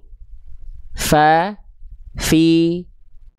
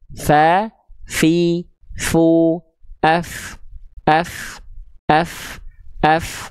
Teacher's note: pasti dengan otomatis dia akan mengalirkan nafas yang nama sifatnya disebut dengan hams